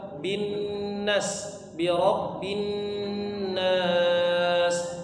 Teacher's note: bin dipanjangkan tiga harakat kemudian Nas ini bisa dipanjang dua harakat · bin dipanjangkan 3 harokat